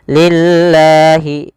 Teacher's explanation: Pada lafal lillah di sini lam tipis.